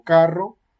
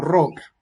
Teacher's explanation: la punta de la lengua toca los alveolos vibrante múltiples es decir el contacto ocurre como una especie de · el contacto ocurre como una especie de vibración que es además múltiple